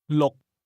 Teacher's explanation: Say again, 6, using a low-level tone.